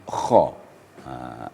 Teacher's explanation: tempatnya adalah aqsal halaq artinya ujung tenggorokan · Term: huruf halaq